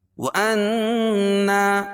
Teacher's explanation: نون مشدد میں غنہ ہوگا، اور غننا وا کو موٹا پڑھیں گے کیونکہ یہ حروف مستعلیہ میں سے، اور نون میں جو ہے نا ملائیں گے، نون زبر نن، اور یہ دوسری نون یہاں پہ غنہ ہوگا۔